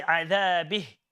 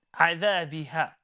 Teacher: The simple answer is there is a mad here. Okay, and because the ending letter is an alif, we add the mad on and we stop with the mad